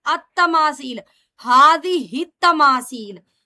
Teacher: الف لام کا لام تا کی وجہ سے ادغام شمسی ہے، ہم اس کو التماثیل نہیں پڑھیں گے بلکہ التماثیل، ہذہ التماثیل ملا کر پڑھیں گے۔